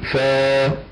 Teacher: في الفاء قلت فاه وجبت ها نقول فا وليس فاه